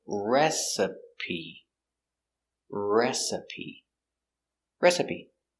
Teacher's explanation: put the stress on a first syllable